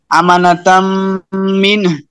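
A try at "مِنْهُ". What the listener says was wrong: এই হুটা একটু কম শোনা যাচ্ছে আবার। হ্যাঁ মিন একটু হায়ের মতন আওয়াজটা একটু বোঝা যায়। অন্য সময় আপনি এখন যেভাবে পড়ছেন অন্য সময় পড়লে হবে, এখন যেহেতু আরেকজনে শিখবে বা জানতে চাচ্ছে সেই হিসাবে আরেকটু হাঁটা আওয়াজটা করেন। মিন। আচ্ছা, আমি যে মিন বলছি শেষে যেটা হায়ের ধাক্কা আসে এটা বুঝতে পারেন?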